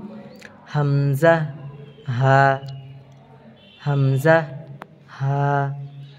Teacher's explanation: 1 নম্বর মাখরাজ, হলকের শুরু হইতে